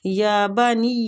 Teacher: یا کو کھینچیں گے کھڑی زبر کی وجہ سے